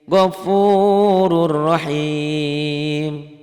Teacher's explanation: tidak pakai dengung jadi cuman melebur doang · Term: idghom Bila Ghunnah